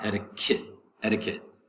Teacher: First T is going to be pronounced like a D in American English. So it's not etiquette, it's etiquette.